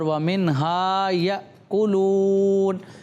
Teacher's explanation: الف مدہ ہو رہا ہے. الف مدہ کو کتنا کھینچ کے پڑھیں گے؟ ایک الف یعنی 2 حرکات